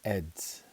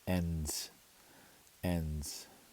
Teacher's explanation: that's the thing about these nasal vowels is they make a n Sound when they're next to a consonant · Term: nasal e